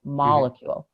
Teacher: So the word molecule has the emphasis on that first syllable